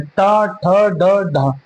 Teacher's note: तो ट वर्ग कैसा होता है? मूर्धन।